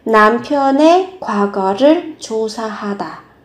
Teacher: Của thì các bạn sẽ có từ ơi, 남편의, và cái từ này khi nó mang nghĩa là sở hữu, các bạn phát âm thành e